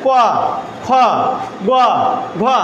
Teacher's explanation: যেমন যদি আমি প্রথম বান উচ্চারণ করি এবং তৃতীয় বান উচ্চারণ করি তাহলে বাতাসটা ভিতরে আসে, যেমন ক, যখন খ বলবো বাতাসটা বাইরে চলে যায়, ক খ গ ঘ। অর্থাৎ আমরা এটা এবং এটা যখন উচ্চারণ করি বাতাস ভিতরে আসে এবং এটা আমরা ছেড়ে দেই, একটা ছন্দের সাথে সাথে এগুলো উচ্চারণ করা সম্ভব হয়।